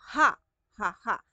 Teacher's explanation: Ibig sabihin, dito lang siya manggagaling sa titilaukan natin. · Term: Pasutsut